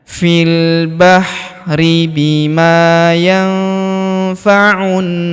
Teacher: huruf nun sukun bertemu huruf fa, maka nun sukunnya melebur ke huruf fa, kita baca dengung dan samar. Dengungnya kita tahan 2-3 harokat.